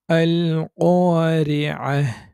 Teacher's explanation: রি, রি এভাবে বাংলা র যেভাবে সেটাই হচ্ছে বারিক। এখানে রি এরকম হবে না, রি, রি।